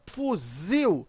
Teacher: Por exemplo, eu tenho aqui a palavra fuzil. Quando você pronuncia fuzil, você observa que o zil, né, ele é mais forte. Veja, a sílaba tônica aqui é o zil. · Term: oxítona